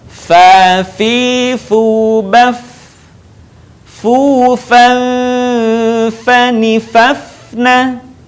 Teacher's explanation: Huruf fa keluar dengan menyentuhkan ujung dua gigi seri bagian atas dengan bibir bawah bagian dalam. Diucapkan dengan mengalirkan suara sekaligus dengan udaranya dengan lembut.